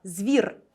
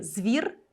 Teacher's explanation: буква і звук і які пом'якшує попередні приголосні в такому випадку у нас може бути подвійна вимова звір де з твердий і звір де з м'який